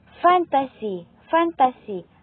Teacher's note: dumidiit ang ibabang labi sa mga itaas ngipin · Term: panlabing pangipid